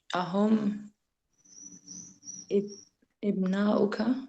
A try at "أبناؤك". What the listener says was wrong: So it's not ib because you got the hamza at the top there, so it's ab.